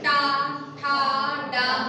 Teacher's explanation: हमारी टंग क्या है, मुड़ रही है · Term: मूर्धन्य